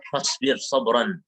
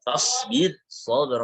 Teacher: Fasbir sabran itu kan dalam dua kata, ra-nya sukun sebelumnya kasrah tapi setelahnya shad tapi dalam kata yang lain. Maka di sini harus dibaca tipis. Fasbir, sabar, nggak boleh tebal.